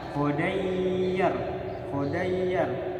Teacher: ketika fathatain bertemu ya tasdid maka disambung bacanya khodayyar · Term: idgham bi gunah